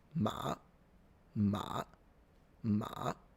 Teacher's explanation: They just go a little low. They start from low and go lower. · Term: third